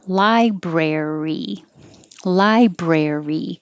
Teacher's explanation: so it's one two three library library lie is longer brare your tongue keeps curled back for the r · Lie is longer. Brer, your tongue keeps curled back for the R when you say brer, and then hold it there until you make the E.